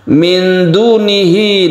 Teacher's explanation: nun mati bertemu dengan dal, ini kita sebut dengan ikhfa, membacanya kita panjangkan